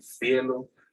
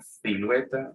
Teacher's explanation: Cielos, ahí empieza el cefeo andaluz, que es la reducción de todos los fonemas sibilantes S, C y Z, reducidos a Z